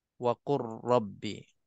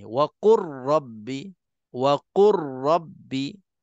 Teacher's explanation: Seolah-olah lam itu tak wujud dalam bacaan. Itu maknanya idgham. · Lam mati bertemu dengan ra, maka lam ini kita dah tak bunyikannya. Kita dah tak baca huruf lam yang ada dalam ayat ini.